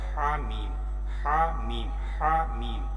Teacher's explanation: ایک ہوتا ہے ہا جو حلق کے درمیان سے نکلتا ہے، اور یہ جو ہے ہا، یہ جو ہے ہا جو ہے یہ حلق کے آخر سے نکلتا ہے